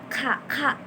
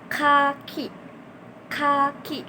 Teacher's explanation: Untuk fonem K itu e si lidahnya ini ke langit-langit lunak lalu melepaskannya K ka K ka. Jadi lidahnya ini tuh e menutup belakang lidah gitu loh.